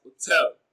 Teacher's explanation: hotel is stressed on its second syllable as hotel. Hotel is pronounced louder and longer.